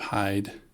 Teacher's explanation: we have the H, the aspiration. There's no voice in there.